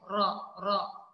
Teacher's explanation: huruf ra bila kita menyebut ada getaran di hujung lidah tu